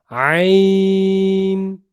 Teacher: اس کو ذرا گلے کی ڈیپتھ سے پڑھیے, گلے کے بالکل نچلے حصے سے اس کو پڑھنے کی کوشش کریں